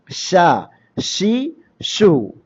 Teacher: നാവിന്റെ മധ്യവും അണ്ണാക്കിന്റെ മധ്യവും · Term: ഷീനിന്റെ മഹ്റജ്